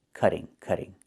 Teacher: Not cutting, but cutting. And in America, we change the t to a fast d when it's between vowels